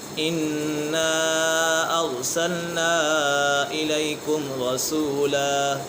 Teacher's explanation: نون مشدد ہے، نون مشدد میں ہمیشہ غنہ ہوتا ہے۔